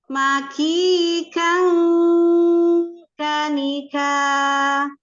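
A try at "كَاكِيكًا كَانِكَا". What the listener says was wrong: Kaki kang kanika. Sama hurufnya kaf semua, alhamsnya. Kang langsung ka.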